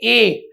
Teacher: आपकी जो जीभ है वो तालव्य में यानी तालु में लगती है, और कंठ से आवाज आ रही है ए की, तो ए क्या हो गया, कंठ तालव्य स्वर हो गया।